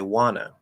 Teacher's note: the NT plus vowel rule will drop the T and we'll say wanna